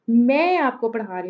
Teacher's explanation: मैं आपको ये कहती हूँ कि मैं आपको पढ़ा रही हूँ, मैं स्ट्रेस कर रही हूँ मैं पे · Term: सेंटेंस स्ट्रेस